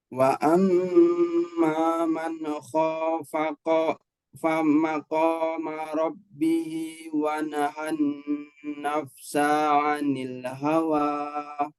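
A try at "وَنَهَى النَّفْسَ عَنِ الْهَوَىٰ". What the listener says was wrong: Huruf sinnya pendek Pak ya. Wa nahan nafsa 'anil hawa. Sa. Sa-nya pendek. Wa nahan nafsa 'anil hawa.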